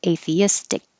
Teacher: instead of releasing the k as atheistic hold the k in the back